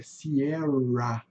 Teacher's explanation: o R tem som de um R forte, o R do caipira, né? Um R bastante acentuado.